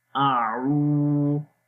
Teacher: حمزہ کے اوپر زبر ہے، منہ کو کھول کر بھی پڑھیں گے، آ لمبا نہیں کریں گے